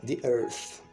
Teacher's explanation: A letra E é neutra, mas quando a próxima palavra começa com uma vogal, tende a ser um I